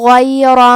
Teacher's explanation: غین کی ادائیگی حلق کے اوپر والے حصے سے ہے. غین حروف التفخیم میں سے ہے، تو ہم یہ حرف کو موٹی آواز میں پڑھیں گے.